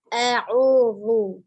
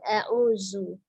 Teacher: Huruf zalnya ujung lidahnya ada di ujung gigi seri atas. Lu bukan zu.